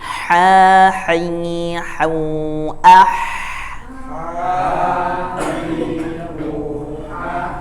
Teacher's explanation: Nah, itu al-jauf. Jadi ha membuka, hi tarik ke samping, hau maju ke depan.